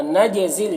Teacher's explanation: نجزل جیم میں قلقلہ ہوگا